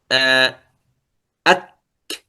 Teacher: في الكاف فيها حبس للنفس ثم همس. مثلا آه، أك، تنظر، حبس للنفس، أك، ثم همس.